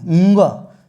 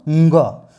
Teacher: इसको नाक से बोलेंगे ंग, है ना।